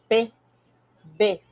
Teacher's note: O P e o B eles são oclusivos, eles têm esse som explosivo